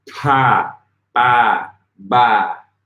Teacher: You want to make sure that the first one is unvoiced and the second one is voiced.